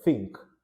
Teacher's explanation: if it's voiceless th as in the word think you replace it with a t